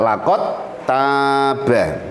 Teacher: Idgham. Jadi huruf dal masuk pada huruf tak, laqad taba. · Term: idgham jinsi